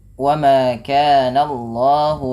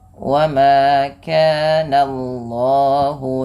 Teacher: Wa ma kana Allahu, Allahnya perhatikan jangan menebalkan langsung jangan menebalkan bunyi suara jangan menebalkan bunyi suara na-nya, tapi ditebalkan bunyi Allahnya, sehingga na-nya tipis, Allahnya tebal